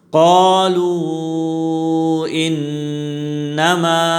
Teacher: انما میں نون مشدد ہے، یہاں غنہ ہوگا، اور ما میں الف مدہ ہے، مد اصلی، اس کو بھی ایک الف کی مقدار کھینچ کر پڑھیں گے۔